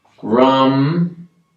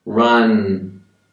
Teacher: when i'm saying m sound i'm closing my mouth and i don't open it again